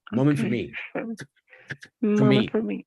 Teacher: Incluso yo pronunciaría nada más una F.